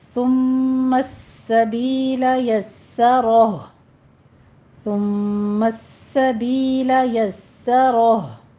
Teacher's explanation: یسرہ، یس سو نہیں کہنا، رو کو مفخم کرنا ہے، پیچھے سین باریک ہی رہے گا، سین کی تشدید ادا کرنی ہے · سین کے اوپر آپ نے تشدید ادا کرنی ہے، سختی سے، تھوڑا رک کر سیٹی کی آواز آئے گی